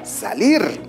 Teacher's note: la mayor fuerza de voz se encuentra en la última sílaba